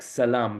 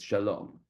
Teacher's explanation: the “suh” at the end as opposed to “shuh” is very common in Arabic